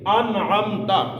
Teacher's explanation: اس لیے کہ آگے عین آ گیا ہے، اور عین جو ہے وہ حروف حلقی میں سے ہے، اس لیے سر غنہ نہیں ہوگا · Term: نون ساکن